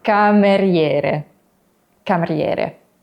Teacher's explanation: the I usually becomes a Y sound.